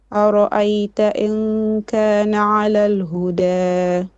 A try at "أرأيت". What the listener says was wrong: Ra'ayta. Don't make your hamza heavy. So ra'ayta.